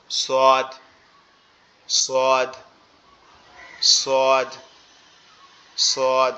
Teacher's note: সোয়াদ যেটা, সেটা আমাদের জিহ্বার আগা নিচের দুই দাঁতের আগার সঙ্গে লাগবে। জিহ্বার আগা নিচের দুই দাঁতের আগার সঙ্গে লাগবে, লেগে উচ্চারিত হবে সোয়াদ।